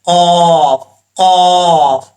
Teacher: زبان کی جڑ اوپر والے تعلق کے نرم حصے سے لگے تو قاف پڑھا جاتا ہے